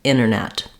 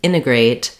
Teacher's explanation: They may say integrate, like I just did, or often they'll also say integrate. So in words that have NT, oftentimes in native fluent speech, American speakers will drop the T.